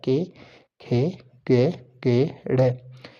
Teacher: जो के वर्ग होता है वो कंठ द्वारा बोला जाता है, जो गले द्वारा बोला जाता है। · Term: कंठ्य व्यंजन